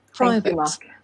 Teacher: Private étant accentué sur la première syllabe, la deuxième est réduite. On ne prononcera pas donc A-T-E, eight, mais at. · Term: réduction des voyelles